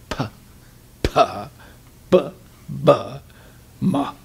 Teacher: So these are what you would call labials. Labials. You make the sound with your lips.